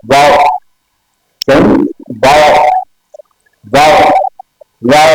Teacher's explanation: تو یہ کیا ہے، یہ دونوں ہونٹوں پہ گول کرنے سے اور پھر ان کو ایک الگ کر دینے سے واؤ ادا ہوتا ہے. دونوں ہونٹوں میں گول کریں تو ہم الگ کرتے ہیں واؤ، پھر واؤ کی ادائیگی کا طریقہ کار.